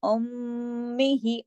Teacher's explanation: तशदीद होगी, तो मीम पे बड़ा गुन्ना होगा